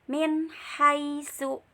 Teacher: Ada nun mati ketemu dengan ha, dibaca jelas.